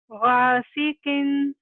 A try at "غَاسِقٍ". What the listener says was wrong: الف بھی ہیوی ہوگا. غاسقین. قاف ہم نے بھی نہیں لیا مگر قاف از ہیوی لیٹر. غاسقین.